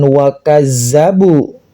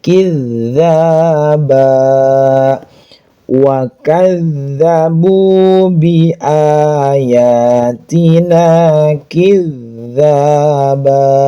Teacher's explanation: Ada tasydid, sama pembacaannya seperti ini. Dzal bertasydid, ditekan dengan makhraj dzal ujung lidah.